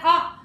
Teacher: विवृत होता है, जैसे पूरा मुंह भाग खुला हुआ रहता है हमारा